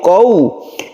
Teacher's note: Qaumihi dibaca lemas atau layin ya. Sukun waw sebelumnya ada fathah. Qau menjadi u, jangan o. Jangan qaumihi tapi qau.